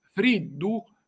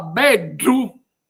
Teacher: si pronuncia con una D cacuminale, quindi arrotolando la lingua all'indietro e facendo toccare alla sua punta il palato